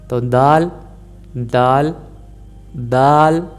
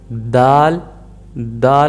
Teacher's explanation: ज़ुबान को मसूड़ों में जो ऊपर वाले, सामने वाले ऊपर वाले दांत हैं हमारे, जो बड़े दांत होते हैं, इनके जो मसूड़े हैं इनकी बेस में अंदर वाली साइड से आपने रखना है। दाल, दाल। और ज़ुबान की नोक को रखना है, ये याद रखना है, ज़ुबान की सिर्फ नोक का यूज़ करना है और नहीं।